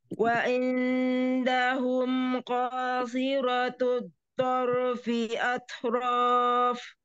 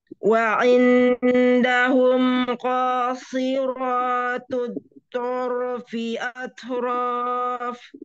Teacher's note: Konya, konya tebal, si-nya juga tebal.